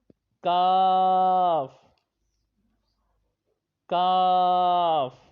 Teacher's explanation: اگلا حرف ہے کاف، کاف، یہ حروف لہویہ یعنی کہ قوف اور کاف یہ دونوں حروف لہویہ کے ہیں، اور یہ زبان کی جڑ اور تالو کے سخت حصے سے پڑھا جاتا ہے۔